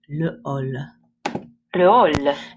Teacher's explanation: this is an aspirated H, which means it just has a little puff of air